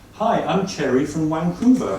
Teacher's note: to a Swiss ear, a J and a Ch sound exactly the same